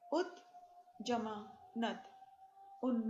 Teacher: यदि 't' के बाद 'n' आता है, तो 't' भी 'n' बन जाता है।